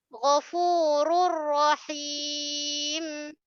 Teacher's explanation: Tanwin jumpa ra. Masuk juga tanpa dengung juga. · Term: idgham bila gunnah